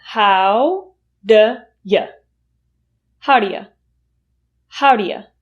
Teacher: Did you hear the two schwa sounds in that reduction?